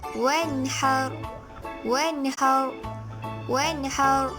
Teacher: apabila nun mati bertemu dengan huruf H, maka ia dibaca jelas